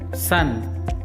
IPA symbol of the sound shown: s